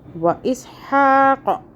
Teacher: حا کو حلق سے، قوف کو موٹا